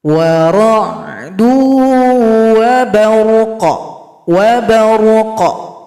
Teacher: huruf Qaf tersebut menjadi sukun dan memiliki suara yang bergema, suara qalqalah. War'du waqau wabarqau.